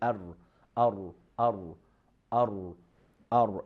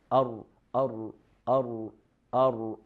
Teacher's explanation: Ra is pronounced from the tip of our tongue with the upper gum. It is upper than letter noon. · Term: letter ra